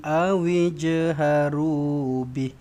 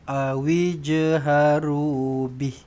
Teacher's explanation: Awij lantunkan jim ni. Okey. Qalqalah sughra.